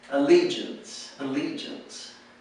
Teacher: the accent is on the second syllable